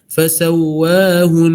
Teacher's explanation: Dilamakan sikit gunnah tu